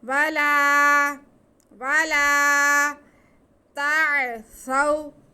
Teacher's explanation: تو یہ الف مدہ ہو گیا، ہم لام کی آواز کو کھینچ کے پڑھیں گے